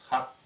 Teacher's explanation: Х – это щелевая согласная, глухая. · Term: Х задняя